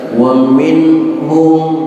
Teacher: wa minhum, nun mati ketemu ha, hukumnya idhar. Namanya idhar halqi karena ha termasuk dari huruf halaqah, huruf tenggorokan.